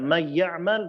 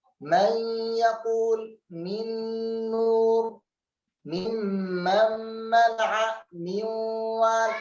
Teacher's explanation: nun sukun ketemu dengan ya, nun sukun dimasukkan kepada ya sehingga ya-nya bertasydid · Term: idgham dengan gunnah